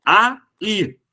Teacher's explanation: Tenho duas sílabas, então, nessa palavra, sendo a última a mais forte.